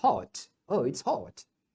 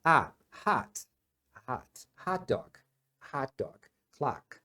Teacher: no inglês britânico eles normalmente vão falar com som de o mais fechado